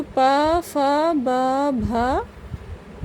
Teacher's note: ओष्ठ का मतलब होता है होंठ, जो हमारे होते हैं उनकी बात हो रही है। तो जिनका उच्चारण ओठों से होता है उन्हें हम क्या कहते हैं? ओष्ठ वर्ण कहेंगे